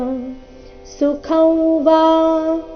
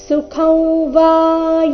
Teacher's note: ಅನುಸ್ವಾರದ ಉಚ್ಚಾರ ನಾಸಿಕ ರೀತಿ ಕಾರಣ ಮುಂದೆ ವ ಇದೆ ಅವರ್ಗೀಯ ವ್ಯಂಜನ ವ ಬಂದಿದೆ